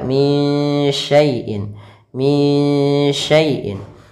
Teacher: Maka cara membacanya itu samarkan suara nunnya kepada huruf shin. Maka min syai'in sambil ditahan gunnahnya 2 harakat.